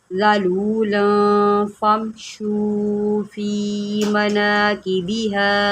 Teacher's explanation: آپ نے گنہ کرنا ہے کیونکہ یہاں پر اخفا ہو رہا ہے